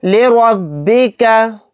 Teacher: یہاں پر بھی را کو موٹا یعنی پر پڑھیں گے کیونکہ را کے اوپر زبر ہے